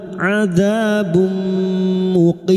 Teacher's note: Adzabum di tanwin bertemu mim idgham bi gunna masuk dengan mendengung, masuk ke huruf mim dan mendengung selama 3 harokat